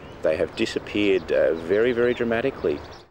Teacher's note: when stressed the h sound is pronounced